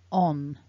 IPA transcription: ɒn